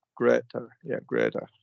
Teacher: we want to flap the T there.